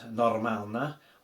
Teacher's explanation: we can hear that we need to roll the R a bit